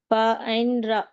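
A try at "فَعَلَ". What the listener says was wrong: ఇది లామ్. రా అంటే ఇలా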